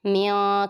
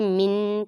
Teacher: تا متحرک واو متحرک میم متحرک نون ساکن کے بعد ذال آ رہی ہے، یہ ذال آتی ہے حروف اخفاء میں سے، تو یہاں پہ اخفاء ہوگا اور گنہ کریں گے اور اس میں آواز چھپائیں گے. میاں کر کے پڑھیں گے، من کر کے نہیں پڑھیں گے.